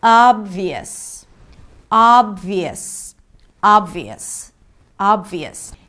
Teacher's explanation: The 'y' is an intrusive vowel that appears between two vowels when you connect them together